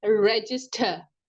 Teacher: the ending R sound is quite more times silent